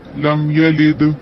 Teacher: دال وقف ہے، آواز پلٹنا ضروری ہے قلقلے کی صورت میں